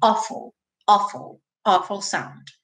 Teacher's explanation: esse awful se escreve com AW, mas tem um som de um O com acento agudo.